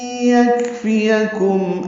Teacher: یکفیکم کاف ساکن پہ ہمس ہے، فا یا جلدی ادا کریں گے، میم ساکن پہ اظہار شفوی ہے.